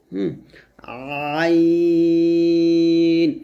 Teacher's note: আইনটা গলার মাঝখান থেকে চাপ দিয়ে চিকন করে বলতে হবে। আইন, এখানে এক ধরনের চাপ প্রয়োগ করতে হবে, আইন, এরকম।